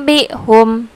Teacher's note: Tidak lagi bacanya anbihum, tapi mengganti huruf nun mati menjadi huruf mim.